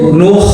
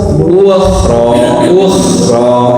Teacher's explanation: huruf KH ini kan termasuk yang tebal ya istilah. Jadi jangan ditarik. Kalau yang huruf tebal ini rahangnya di atas.